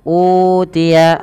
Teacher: utia ini kami lupa memberikannya di sini ada bacaan mad badal mad badal terjadi karena adanya Hamzah bertemu dengan huruf mad berupa wau sukun maka panjangkan u-nya sepanjang dua harakat